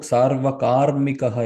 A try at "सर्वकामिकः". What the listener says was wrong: Not karmika. Kamika only. Sarvakamikah only. There is no karmikah. Sarvakamaha, that one who desires everything.